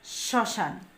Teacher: স এর উপর কিন্তু একটু ঝোঁক পড়ছে আর বাতাস নাক দিয়ে বের হয়ে আসছে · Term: নাসিক্য স্বর